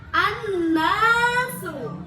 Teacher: menunjukkan hukum bacaan gunnah, mendengung dan 2 harokat